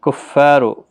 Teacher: کفار فا الف مدہ ہے، رو بھی پر پڑھا جائے گا پیش کی وجہ سے